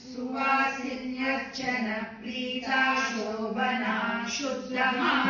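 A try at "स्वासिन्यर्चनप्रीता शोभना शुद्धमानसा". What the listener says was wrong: Don't take a break after prita.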